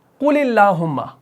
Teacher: یہاں پر زیر آ گئی تو اس اللہ کے لام کو اب باریک پڑھا گیا